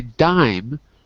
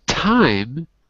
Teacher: dime is a voiced sound i use my vocal cords time is unvoiced i don't use my vocal cords